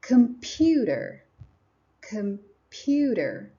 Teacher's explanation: computer has three syllables in general, but the second syllable is pronounced more strongly. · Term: stress